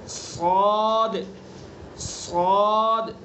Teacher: اس کو پر پڑھیں گے یعنی زبان کا جو پچھلا حصہ ہے اس کو تالو پر لگائیں گے. صاد منہ بھر کے.